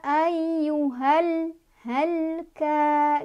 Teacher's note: alif, lamnya dibaca jelas, nggak boleh mantul, nggak boleh ditahan. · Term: alif, lam, Qomariah